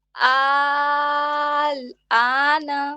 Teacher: آل کو اور تھوڑا سا کھینچیں گے, 6 کاؤنٹس